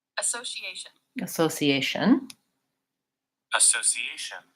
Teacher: the stress comes later in the word on the so and the ation